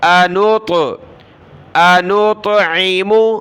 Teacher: نون طا پیش نوط، طا پر قلقلہ ہوگا